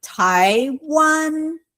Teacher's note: Taiwan is second tone and first tone.